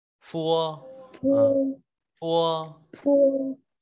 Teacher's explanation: Âm môi răng, răng cửa hàm trên kết hợp với môi hàm dưới, F giống chữ F ta đọc là phua.